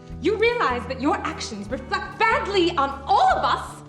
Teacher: natives sometimes produce the sound of words ending with the letter c t by cutting the t sound